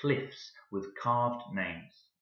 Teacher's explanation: Notice the k sounds. This is an alliterative velar plosive, which just means alliteration, the sound of k.